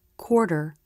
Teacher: when the all vowel is followed by the r consonant the sound does change the lips flare more and the tongue pulls back more and up a little bit this is because we blend the position for the r with · for the awe followed by r the lips round more and the jaw drops less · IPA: [ɔ] + [ɹ], ɔ: